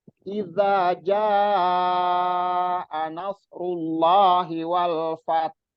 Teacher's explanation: Jadi itu namanya raum, suara yang samar dari huruf yang dimatikan.